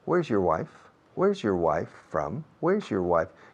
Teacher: Your, tu mujer, esa partícula your, adjetivo posesivo, no tiene peso fonético en la frase o acentual